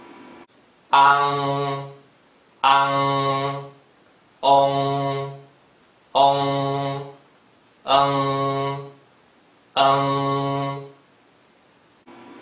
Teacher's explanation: Each of these symbols has a very strong nasal sound at the end, made by lifting the back of your tongue up to the roof of your mouth. The nasal sound is formed in the back part of your nose.